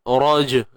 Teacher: jim yang mati di tengah-tengah bacaan ataupun di tengah perkataan, qalqalah sughra, layankan je, raj, lemahkan.